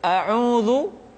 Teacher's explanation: kesalahan di dalam mengucapkan vokal yaitu huruf fathah yang sering tidak jelas pengucapan vokal a-nya contoh auudu sering dibaca audu huruf a misalkan dibaca jadi E